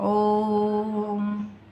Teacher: तिगुना समय लगता है, ह्रस्व स्वर से तिगुना समय, यानी कि बोलने में इसको और ज़्यादा समय लगता है, तो ये प्लुत स्वर कहलाता है।